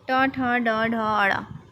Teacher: ट वर्ग में आते हैं और इनका उच्चारण स्थान मूर्धा है